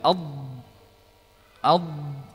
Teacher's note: di sini lidah menempel tapi tidak sampai rapat ya namun yang lebih tepat adalah berkumpulnya suara di antara lidah dan